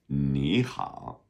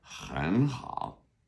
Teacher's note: when 2 third tones come together, the first one becomes a second tone